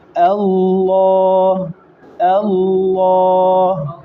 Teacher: حمزہ کو موٹا نہیں پڑھنا، لام کو موٹا پڑھنا ہے